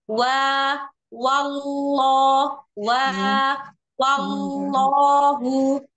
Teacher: di lafzul jalalah dia mulai menebal ketika masuk tasdid · Naam, begitu wa-nya itu kan tipis. Wa-nya itu tipis, tapi dia kan begitu langsung masuk lafzul jalalahnya, maka begitu tasdid dia langsung ditebalkan.